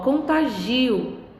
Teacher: Perceberam? Agora, em contagio, a sílaba tônica já está no gi